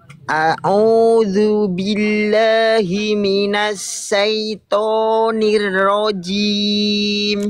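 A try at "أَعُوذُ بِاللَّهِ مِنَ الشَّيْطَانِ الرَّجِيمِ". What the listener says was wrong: Sya, bukan saiton, tapi syaiton. A'udzu billahi minasyaitonir rajim. Nanti disempurnakan lagi huruf-huruf tebal. Itu masih suka monyong-monyong. Jadi jangan monyong-monyong ya.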